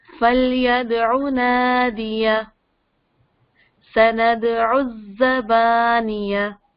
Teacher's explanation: فلیدعو نہیں کیونکہ پھر وہ لمبا ہو جاتا ہے نا, لانگ لیٹر بن جاتا ہے.